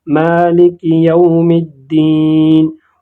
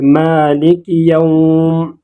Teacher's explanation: इसको वसल की हालत में हम खींचेंगे नहीं, लेकिन जब हम वक़फ़ करेंगे, मिसाल के तौर पर अगर हम यौम पर वक़फ़ करेंगे तो फिर हम इसको 2 हरकत खींच सकते हैं। जैसे यहाँ पर अगर हम वक़फ़ करें कि मालिक यौम, इसी तरह हम पढ़ सकते हैं। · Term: वावलीन